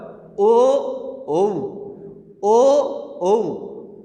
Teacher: দেখো ও উচ্চারণের সময় দেখো তোমার কণ্ঠ থেকেও আসতেছে এবং ঠোঁটেরও ব্যবহার হচ্ছে।